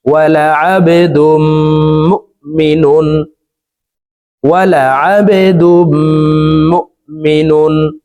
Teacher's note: পড়তে হবে কারণ তানউইনের পরে ইজহারের হরফ খ আসছে এই কারণে এই তানউইন ওয়ালা নুনটি গুন্না ছাড়া স্পষ্ট করিয়া পড়ব